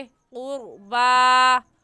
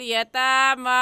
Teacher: खड़ी ज़बर है, एक अलिफ की मिक़दार खींचेंगे